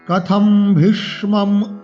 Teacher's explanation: অনুস্বার আছে পরে ভ আছে এটা প বর্গীয় বর্ণ তার পঞ্চম বর্ণ ম করে উচ্চারণ করতে হবে অনুস্বারকে